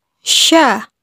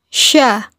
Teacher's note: ketika melafalkannya menyebar nafas dan udaranya yang disebut dengan tafasyi